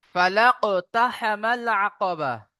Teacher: কফ সাকিনকে তার আগের অক্ষরের সাথে মিলিয়ে কলকলা করে পড়বো